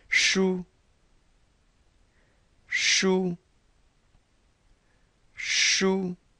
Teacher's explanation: Kind of sounds like the shoe you put on your foot, but your tongue is curled. Sh. Let's try that three times. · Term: curled tongue